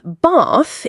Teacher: bath in RP is a long ah like in father. Focus on vowel length and mouth shape.